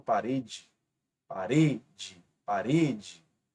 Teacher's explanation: Observe que a penúltima é a sílaba mais forte, mas ela termina em E, a mesma terminação da oxítona, e por isso não leva acento, tá? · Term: paroxítona